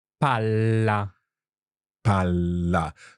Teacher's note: you're holding that l in your mouth and then finishing off the word exactly okay or another way is to pronounce the double letters